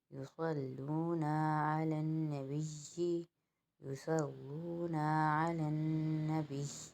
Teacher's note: نبی کے اوپر نون جو ہے وہ مشدد ہے، اس لیے ہم اس کو غنہ کریں گے. اور یا کے اوپر بھی تجدید ہے، اس لیے وقف کی صورت میں یہاں پر جمع باقی رہے گا.